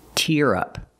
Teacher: the second one is tear we use the ear sound like hear and beer